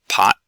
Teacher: extra sort of after the t is released the t can be unreleased if it's the end of a word · The T can be unreleased if it's the end of a word. So if I say something like pot, I don't have to have that t part of it there.